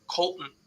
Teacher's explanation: just no T barely an L